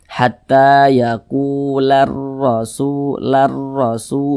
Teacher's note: Kemudian huruf ra memiliki tanda baca fathah. Huruf ra memiliki tanda baca fathah, berarti dia dibaca tebal, dibaca tafkhim, ditebalkan cara membacanya itu.